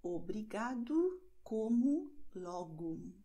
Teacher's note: O am Wortende wird als U ausgesprochen